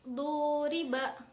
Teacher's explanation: Nah, setelah kata du, nah di situ ada penambahan huruf mad, misalkan wawu sukun. Maka kata du yang tadinya pendek tersebut dibaca menjadi panjang. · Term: mad tabi'i